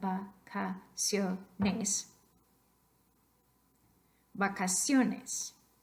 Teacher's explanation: your voice stress should go onto the second last syllable